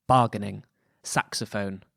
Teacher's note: verse for the metamorphoses was written in dactylic hexameter dactylic meaning a foot of one long or stressed syllable followed by two short syllables